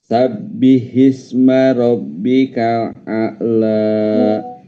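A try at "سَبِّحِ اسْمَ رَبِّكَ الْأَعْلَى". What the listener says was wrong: Maksud saya itu cukup 2 harakat saja. Sabbihisma rabbikal a'la. Jangan a'la. Nah, itu kesannya 2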